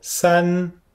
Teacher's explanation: C'est le premier ton. On le fait bien haut.